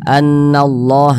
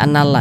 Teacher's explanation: maka lafaz Allah dibaca tebal dibaca tkhim annallah Dibaca annallah Jangan dibaca annalla jangan kemudian di